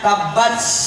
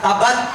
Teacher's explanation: Kalau di Quran ada tak mati, bunyi bacanya tabats, ada angin keluar. Itu namanya hammas tuh.